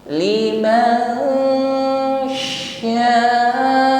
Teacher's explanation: Kita samarkan, kita persiapkan pada makhraj yang ada di depannya, yaitu bersiap pada huruf shin. Ketika menyamarkan huruf nun pada huruf shin, ini disertai dengan bunyi dengung. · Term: ikhfa